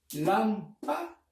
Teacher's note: La tilde o la mayor fuerza de voz la lleva en la antepenúltima sílaba. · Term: palabra esdrújula